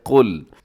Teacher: قل آپ کہہ دیجئے اور اس میں قاف موٹا پڑھنا ہے اور لام کو باریک رکھیے گا، لام کو ہلانا بھی نہیں ہے